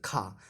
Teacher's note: स्पर्श व्यंजन कंठ ध्वनि, अघोष और महाप्राण ध्वनि है,